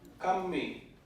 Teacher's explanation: I don't hear much aspiration. Kammi. That sounds like a pretty clear zero onset, zero VOT.